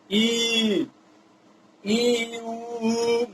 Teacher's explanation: संवृत वो वाला है जिसमें आपका एक तरह से पूरा आपका मुख क्लोज रहता है। ई मुख एक तरह से पूरा आपका क्लोज रहता है